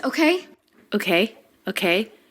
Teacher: pitch goes up at the end